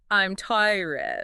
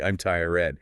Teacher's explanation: the vowel in tired often gets stretched out. The voice drops in pitch.